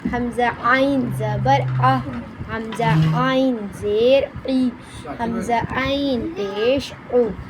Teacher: عین ہا حلق کے درمیانی حصے سے ادا ہوتے ہیں